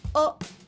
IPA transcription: o